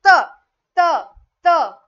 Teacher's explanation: मागच्या दातांच्या वरच्या टोकाला चिटकत असल्यामुळे याचं उत्तर असेल त हे दंत्य वर्ण आहे